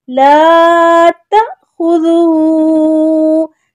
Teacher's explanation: جب حمزہ کے اوپر جزم آ جائے تو جھٹکا دے کے پڑھتے ہیں۔ آپ دیکھیں حمزہ ہے نا، الف جس کو بولتے ہیں، وہ حمزہ کی شکل ہوتی ہے، اس کے اوپر جزم ہے تو اس کو ہم جھٹکا دے کے پڑھیں گے۔